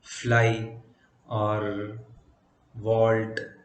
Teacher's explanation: made by the contact of the maxillary teeth with the lower lip vermilan body of the lower lip so if a patient is